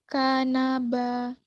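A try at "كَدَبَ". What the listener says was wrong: Kadaba. Dal itu bukan nak. Kadaba.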